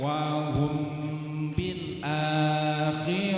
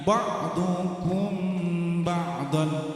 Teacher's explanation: Mim mati bertemu ba, maka dibaca apa? Ikhfa syafawi, 2 ketukan.